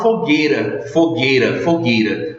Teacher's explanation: na pronúncia engolimos até mesmo essa semivogal I. O U, no caso aqui, faz parte do dígrafo com a letra G.